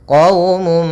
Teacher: Maka caranya adalah masukkan suara mimnya, suara munnya kepada mim sehingga hilang suara nunnya, masuk kepada mim. Qaumum sambil ditahan nya. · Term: idgham bi gunnah